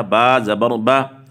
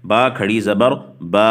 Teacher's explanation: کھڑی زبر وہ تھوڑا سا کھینچ کر پڑی جاتی ہے، تھوڑا سا لمبا کر کے، ایک الف کی مقدار کے برابر